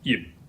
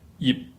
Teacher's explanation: In order to get this word out, you have to close your mouth to get the P sound, but you do not pronounce it. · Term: unpronounced P